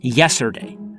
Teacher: the T always goes missing